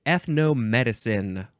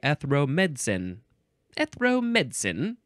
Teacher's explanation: The Brits like to say, they like to cut out a whole syllable. They like to say ethromedicine.